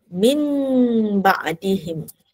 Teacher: Tukar nun mati tu kepada iqlab tu maksudnya ubah atau tukar. Jadi kepada bunyi mim.